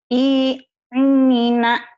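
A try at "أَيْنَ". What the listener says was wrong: Ai, bukan Nina, Bu. Aina. Ain.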